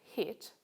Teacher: the highest point of the tongue when making the vowel sound in the word hit is quite high